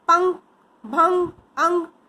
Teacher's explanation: इसका उच्चारण नाक से होता है